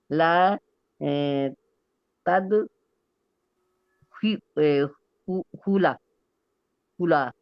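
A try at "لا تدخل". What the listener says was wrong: जबर क्यों आ रहा है बेटा? जबर क्यों आ रहा है? आखिर पे क्या आता है जब हमने जज्म देना है कि हमने जबर देनी है?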